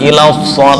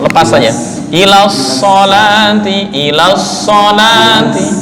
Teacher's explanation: Shot lepas, jangan tertahan. Bukan ila shol, itu kayak tertahan.